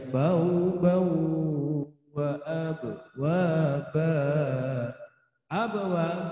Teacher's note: karena tanwin bertemu wawu, maka melebur harokat tanwin kepada wawu disertai dengungan sekurang-kurangnya 2 harokat. Itu ya, melebur harokat tanwin kepada huruf wawu disertai dengungan sekurang-kurangnya 2 harokat. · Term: idgham bi gunna